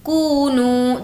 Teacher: کونو, دونوں کو کھینچیں گے کیونکہ واو مدہ ہے.